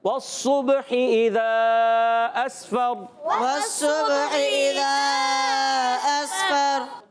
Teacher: را کا مخرج ہے زبان کا سرا، اس میں نوک زبان بھی آتی ہے